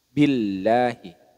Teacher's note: lafaz Allah diawali harakat kasrah maka ini disebut dengan lam tarqik lam jalalah tarqik jadi dibaca tipis Billahi Bukan dibaca tebal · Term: Lam jalalah tarqiq